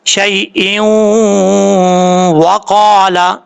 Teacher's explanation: حروف یرملون میں سے ہے، تو یہاں پہ ادغام یرملون ہوگا، ایک الف کی مقدار غنہ کیا جائے گا